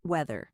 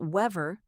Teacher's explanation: Notice the th sound. Put your tongue gently between your teeth.